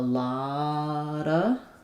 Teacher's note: we might sometimes leave that v sound out. So it sounds like a lotta. We're linking that T to the next schwa.